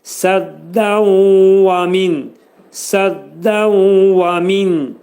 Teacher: idğam mə'al-ğunnə olur. Nun hərfi vəvə çevrilir.